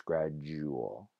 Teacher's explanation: the d with a d becomes a j, so gradual becomes gradual with a j sound there